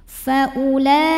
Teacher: Jadi walaupun ada hamzah baris dhammah, ini bukan mad badal. Jadi u-nya nggak perlu dibaca panjang, pendekin.